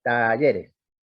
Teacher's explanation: ahí tienen un efecto típico de alargamiento de la vocal pre tónica · un ejemplo típico de alargamiento de la vocal pretónica, pero es exactamente la definición de la tonada cordobesa